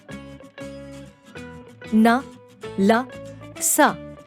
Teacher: न ल स का उच्चारण अब वस्तुत दांतों से न होकर दांत और मसूड़े के बीच के भाग से होता है अत इन्हे अपवर्त्य भी कहा जाने लगा [संगीत] है वर्गों के